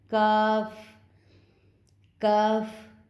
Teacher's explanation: زبان کی جڑ اور تالو کا جو سخت حصہ ہے اس سے اس کاف کی ادائیگی ہوگی